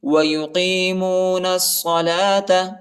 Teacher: نون کو صاد کے ساتھ ملائیں گے، الف اور لام نہیں پڑھا جاتا، الف اور لام کے اوپر حرکت نہیں ہے۔